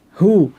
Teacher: হরফের উপরে দম্মার উল্টো রূপকে দম্মাহ মামদুদা বলে। দম্মাহ মামদুদার উচ্চারণ দুই ঠোঁট গোল করে, দম্মার মতো দুই ঠোঁট গোল করে এক আলিফ টেনে করতে হয় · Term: দম্মা মামদুদা